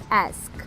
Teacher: o último som é um som de k, que não produz vibração na garganta, então é um som voiceless